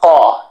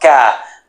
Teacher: In the back of the mouth, caw. In the front of the mouth, ka.